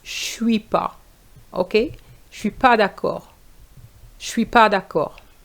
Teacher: the ne disappears in the negative when you speak like that